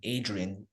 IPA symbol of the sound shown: dʒ